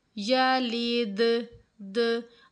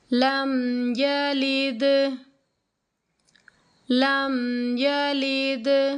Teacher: अब ये द की आवाज़ आ रही है तो इसको कहते हैं कलकला, यानी कि लफ्ज़ को हिला कर पढ़ना।